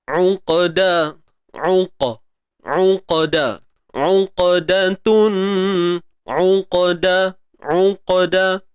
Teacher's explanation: Au ni muncul bibir lah sebab baris depan. Mana-mana huruf yang berbaris hadapan mesti kena muncung.